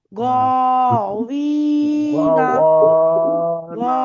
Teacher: ইয়া সাকিনের ডান দিকে জের এসছে, ইয়া মাদ্দা হবে, এক আলিফ পরিমাণ টেনে পড়তে হবে।